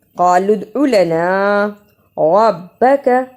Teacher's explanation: را کو موٹا پڑھا، کاف کو جلدی ادا کیا.